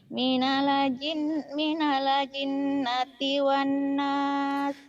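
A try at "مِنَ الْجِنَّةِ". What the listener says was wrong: Jangan minale ya, minal. Minal jinnati, minal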